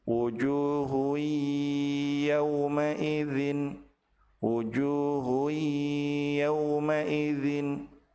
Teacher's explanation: Apabila tanwin bertemu dengan ya, maka tanwin dilebur ke huruf ya dan ditahan dua harakat disertai dengan ghunah. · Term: Idgham bighunah